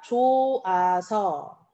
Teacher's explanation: 히읗 탈락은요, 발음할 때 히읗이 발음이 잘 안 돼요.